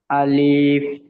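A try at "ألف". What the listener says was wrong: আলিফ টান দেবে না, টান হবে না। আলিফ জলদি বলতে হবে। এখানে নিচে দেখেন পটস চিহ্ন আছে। আলিফ।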